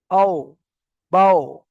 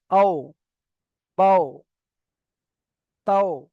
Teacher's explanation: দুই ঠোঁট অসম্পূর্ণ মিলিয়ে, মানে দুটো ঠোঁট পুরোপুরি মিলবে না, অসম্পূর্ণ মিলিয়ে মাঝখান থেকে ওয়াও উচ্চারিত হয়ে যাবে।